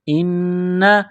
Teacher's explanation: یہاں زیر ہے، اس کو حمزہ پڑھیں گے۔ نون مشدد ہے، غنہ کریں گے، آواز ناک میں چھپائیں گے۔